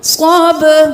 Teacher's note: با ساکن ہے, قلقلہ ہوگا, آواز پلٹائیں